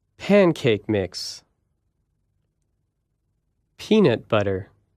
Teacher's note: put more stress on the first part of the first word